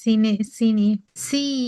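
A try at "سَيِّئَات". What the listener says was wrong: আপু ইয়াত হবে না, আত হবে।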